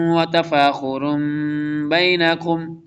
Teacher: اقلاب مین چین، letter سے change ہو جاتا ہے، اگرچہ نون تنوین پہ اینڈ پہ نون ساکن کا ساؤنڈ ہوتا ہے، بٹ یہاں پہ میم لکھا ہوا تو میم ہی پڑھا جائے گا